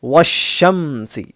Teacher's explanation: حروف شمسی کے شروع میں اگر الف لام ہو، یہ والا الف لام، تو الف لام دونوں کو نہیں پڑھیں گے بلکہ بعد والے لیٹر سے ملا کر پڑھ لیں گے، یعنی حروف شمسی جو ہے اس لیٹر کو ملا کر پڑھ لیں گے پہلے والے لیٹر سے ڈائریکٹ۔